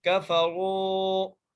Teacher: را کو ایک الف کی مقدار کھینچ کے پڑھیں گے کیونکہ را کے ساتھ واو ساکن ہے اور یہاں پر حروف مدہ کا قاعدہ لگ رہا ہے اور را کو ہم موٹا کر کے پڑھیں گے۔